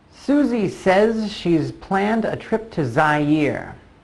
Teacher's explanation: the S at the end of says, also a Z sound, and the S at the end of she's, also a Z sound